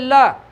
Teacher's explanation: ल बोलते में जीभ हमारी तालु से ऊपर लग जाती है और प्राणवायु जीभ के बगल से या किनारे से बाहर निकलती है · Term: पार्श्विक वर्ण